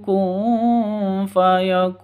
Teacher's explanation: nun mati bertemu dengan Fa samar didengungkan siap-siap ke huruf Fanya karena ikhfa hakikiakun